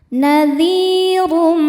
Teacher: Huruf ra dibaca tafkhim karena berharokat dhammah tanwin, dibacanya tebal.